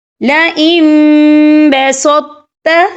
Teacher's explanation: یہاں پر تو جو ہے آپ نے موٹا پڑھنا ہے اور تا جو ہے آگے جو تا ہے یہ آپ نے باریک پڑھنا ہے۔